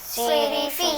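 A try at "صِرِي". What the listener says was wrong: صاد کو موٹا پڑھیں گے. صیری فی. شو نہیں بولنا، واو کا ساؤنڈ نہیں آئے گا صاد میں. صیری فی.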